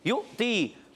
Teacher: حمزہ پر جزم ہے، جھٹکا دے کر ادا کریں گے اور یا ساکن سے پہلے زیر یا مدہ ہو گیا.